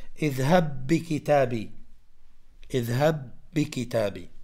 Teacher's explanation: هذه أمثلة على المتماثلين أي إذا أتت مثلا حرف الباء ساكن وبعده حرف باء مفتوح مكسور مضموم إلى غيره تصبح الباء الباء واحدة وتأخذ حركة الحرف الذي بعدها تأخذ حرف تصبح مشددة تأخذ حركة الحرف الذي بعدها.